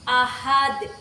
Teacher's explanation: Hukum bacaannya qalqalah kubro, karena ada dal yang diwakaf pada akhir kalimat. Cara membacanya itu dipantulkan keras seperti ini